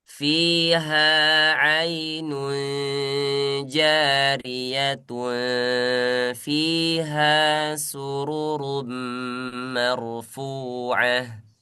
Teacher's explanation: gak ketutup ya bibirnya berarti tung. Nah, kalau dia ketutup jariatum. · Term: ikhfa